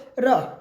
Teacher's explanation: र अर्थात र इसका भी उच्चारण मूर्धा से होता है